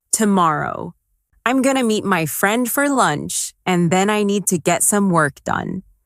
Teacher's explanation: Stress tomorrow. Meet friend, lunch, and work. The other words should be softer and faster. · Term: natural rhythm of English